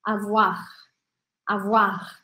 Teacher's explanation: avoar a voar e aí imagina que tá saindo um ar quando você for fazer o r precisa sair um certo ar pela sua garganta a voar a Voar como se eu tivesse comido uma balinha